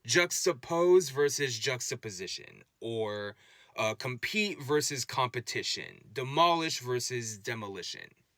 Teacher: And if we take ishin, for example, and look at how it interacts with words, we'll often find that the preceding vowel becomes more of an unstressed schwa sound